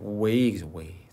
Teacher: 자 에하고 이는요 이중 모음이지. 이중 모음 way 그죠?